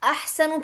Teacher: احسن پھر حلق کے وسط الحلق سے نکلے گا